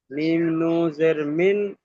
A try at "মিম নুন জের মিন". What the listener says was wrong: আপনি আবার নু বলছেন। নুন পুরো শব্দটা উচ্চারণ করতে হবে, এটা হক আদায় হচ্ছে না। মিম নুন জের মিন।